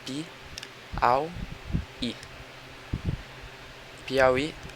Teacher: Piauí, na segunda sílaba, au, vocês podem ver que o a está junto do u, formando assim um ditongo, que nesse caso ele é decrescente, porque o a funciona como vogal e o u como semivogal, decrescendo o tom.